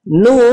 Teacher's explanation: Di sini kita membacanya sebanyak 6 harokat atau 3 ayunan, nah atau 6 ketukan.